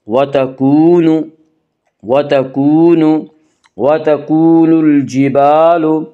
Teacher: وتکون، واو مدہ، واو مدہ وہ واو جو ساکن ہو اس سے پہلے پیش ہو، واو مدہ کو 1 الف کے برابر کھینچ کر پڑھیں گے